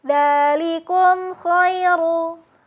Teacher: huruf mimnya terdengar mengalir tanpa adanya gunah dan tanpa dipantulkan · Mim sukun bertemu dengan kho, dibacanya dengan jelas ya.